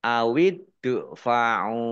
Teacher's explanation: Mad thi'i panjang dua harakat awidfauau Dal sukun bacaan Qalqalah dibaca memantul ditampakkan pantulannya